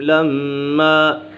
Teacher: میم مشدد ہے، میم مشدد میں سے غنہ ہوتا ہے